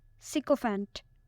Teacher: It has 3 syllables and the stress is on the first one.